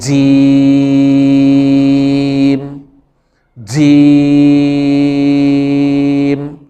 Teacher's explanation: زبان کے درمیان کو اوپر تالو کے ساتھ لگانے سے جیم ادا ہوتی ہے